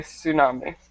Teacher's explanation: So in English, we just don't pronounce the T. We just say tsunami.